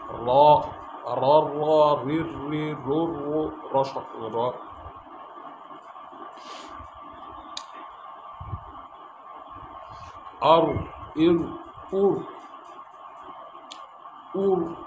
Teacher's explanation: জিহ্বার আগার পিঠ তাল বরাবর উপরে তালের সাথে লাগা